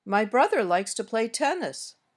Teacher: My voice went up a little on brother, then back down, and up on tennis, and finally down at the end. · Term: intonation